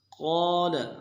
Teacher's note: قال قاف کو موٹا کرنا ہے، قاف کے بعد الف مدہ ایک الف دال میں کھینچیں گے